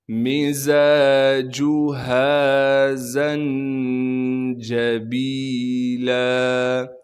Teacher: مِزَاجُهَا زَنجَبِیلًا، زا کو نون ساکن سے ملائیں گے، نون ساکن سے اس لیے ملانا ہے کہ نون ساکن ہے، نون پہ اخفا یعنی غنہ کریں گے، جیم پر قلقلہ نہیں کیا جائے گا اس لیے کہ جیم ساکن نہیں ہے، با کے بعد یا مدہ ہونے کی وجہ سے با کو ایک الف کے مقدار کھینچیں گے، لام پر جب وقف کریں گے پھر لام کو ایک الف کے مقدار کھینچنا ہے۔